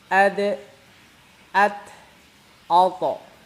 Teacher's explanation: terasa banget itu keluar dari ujung lidah, ditempelkan ke gusi-gusi gigi seri yang atas. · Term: dal